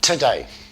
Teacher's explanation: The first syllable is unstressed. We change that oo sound to t.